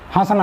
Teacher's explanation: इसका जो उच्चारण है हंसना का वह क्या करेंगे नाक और मुख दोनों के माध्यम से किया जाएगा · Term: अनुनासिक